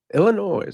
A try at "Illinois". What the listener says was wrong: I've gotten a note on Twitter that you need to stop pronouncing the S in Illinois. It's not Illinois. It's Illinois. Silent S. you always say Illinois.